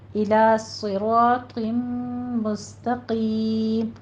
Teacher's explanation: سین بھی باریک، تا بھی باریک. قیم کو آپ نے پر پڑھنا ہے. · را بھی پر پڑھا جائے گا، طا بھی پر پڑھا جائے گا. اور مستقیم میں قوف بھی پر ہے، لیکن دھیان رکھنا ہے آپ نے کہ آپ کی سین اور تا جو ہے یہ پر نہیں ہونی چاہیے.